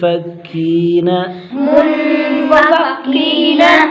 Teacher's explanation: والمشرکین، را کو باریک کریں گے، را کے نیچے زیر ہے، کی پر یا مدہ، ایک الف کھینچے گے۔ منفکین، من پر اخفا ہوگا، غنہ کر کے پڑھیں گے